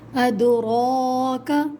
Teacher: وما ادراک، دال پہ بھی قلقلہ کریں گے، یہاں پر بھی دال حروف قلقلہ کا لفظ ہے اور ساکن ہے تو آواز پلٹ کر آئے گی۔ را پہ کھڑا زبر ہے تو موٹا پڑھا جائے گا۔